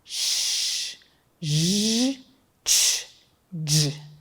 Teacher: produzidas com a língua, que é o articulador ativo, se movimentando em direção ao céu da boca numa posição que fica entre os alvéolos e o palato duro, que é o céu da boca. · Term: palato-alveolares